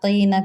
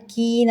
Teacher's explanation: مشفقین قوف کے ساتھ قینہ کرنا ہے، کینہ نہیں کرنا